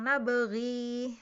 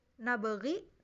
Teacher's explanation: Kalau di kolon dibacanya dengan panjang nabaghi. Tapi kalau di riwayat Hafiz yang sering kita baca itu nabaghi tanpa ya, pendek ya, ri-nya pendek.